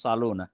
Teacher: in the Gulf the the word has slightly changed to salona and it's also pronounced with an emphatic sad